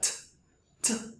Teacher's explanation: pronunciando el sonido de T y tomándote la garganta T T sentirás que tu garganta no vibra